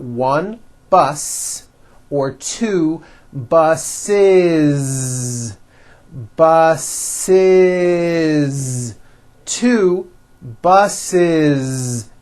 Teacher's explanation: the last sound you hear is that voiced Z